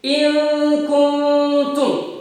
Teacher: Artinya bunyi huruf nun disamarkan karena bertemu dengan huruf kaf dan huruf ta. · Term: ikhfa